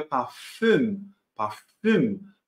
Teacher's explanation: Esse U com trema a gente pronuncia fazendo a boca do U, só que tentando colocar ali o som do I. Então, fica um intermediário entre o U e o I.